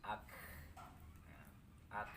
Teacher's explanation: Ada sisa-sisa angin ya. Hembusan napas itu namanya hamas.